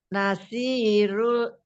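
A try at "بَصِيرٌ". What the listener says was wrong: Ba. Pakai ba ya Umi. Basirun.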